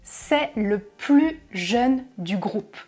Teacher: Jeune, c'est un adjectif. Il commence par une consonne, donc je ne prononce pas le S de plus jeune.